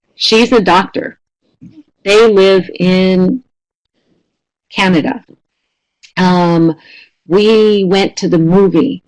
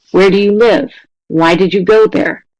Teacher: pitch falls at the end. And we tend to use falling for statements and WH questions.